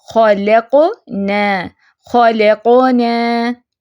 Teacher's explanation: اب خا بھی فیٹ ہے، لام درمیان میں باریک ہے، اس کو باریک رکھنا ہے، اور قاف پہ آواز اچھلے گی. قاف ساکن آ گیا نا.